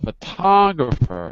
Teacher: Put the stress on second syllable.